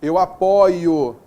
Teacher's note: nós temos o timbre aberto do verbo apoiar